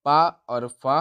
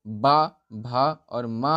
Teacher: पा और फा हमारे अघोष व्यंजन हो जाएंगे और बा, भा और मा हमारे सघोष व्यंजन हो जाएंगे